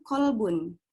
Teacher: mengeluarkan huruf qa dari lidah bagian belakang, dekat dengan tenggorokan